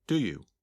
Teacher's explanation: You can still hear each of the three words, but the words do you sound like one word.